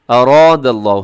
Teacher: اراد اللہ، ہاں موٹا کرنے والا کام یہاں کر دینا کیونکہ را کے اوپر زبر ہے، را موٹی پڑی جائے گی، آگے الف بھی موٹا ہو جائے گا